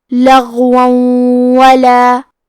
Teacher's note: واو حروف الادغام بغنہ میں سے ہے تو ہم یہ حکم کو غنہ اور تشدید کے ساتھ ادا کریں گے